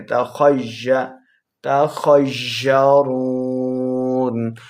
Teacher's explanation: خا حروف مستعلیہ میں سے ہے، خا کو موٹی آواز کے ساتھ پڑھیں۔ تخیّ، تخیّرون، را واو پیش، رو، واو مدہ ہے، 2 حرکات لمع کریں گے اور نون کے اوپر ہم نے وقف بھی کرنا ہے۔